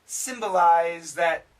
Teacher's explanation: Now, this Z sound can kill the TH. So we end up with symbolize that.